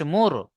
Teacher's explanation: র সাকিনের ডান দিকে পেশ আছে, র কে পুর করে পড়তে হবে, অর্থাৎ মুখটা গোল করে, মিম র পেশ মুর, পুর করে পড়তে হবে।